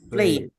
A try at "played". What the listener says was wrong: I need to hear the D clearly